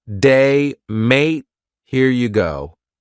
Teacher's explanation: kind of going up at the end of a sentence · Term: Rising intonation